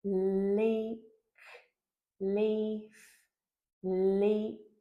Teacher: we're transitioning to a high front vowel where our lips need to be spread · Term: spread lip position